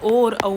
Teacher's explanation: तो ओ और औ जो है जिसमें हमारे होठ भी गोल होते हैं और कंठ से भी आवाज आती है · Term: ओष्ठ कंठी